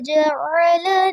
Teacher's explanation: جعل عین بھی واضح رہے گا اور لام کی زبر کو لمبا نہیں کرنا